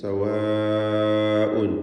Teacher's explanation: നിർബന്ധമായും അലിഫിന് 4-5 ഹറക്കത്തിൻ്റെ അളവിൽ ദീർഘിപ്പിക്കേണ്ടതാണ് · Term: മുത്തസിൽ വാജിബാണ്